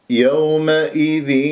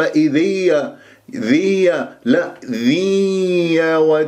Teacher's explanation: لازم تطلع غنه فيها